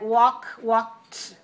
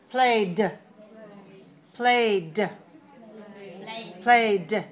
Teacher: Sometimes ED ending sounds t, like walk, walked. Sometimes d, played, played, played, right?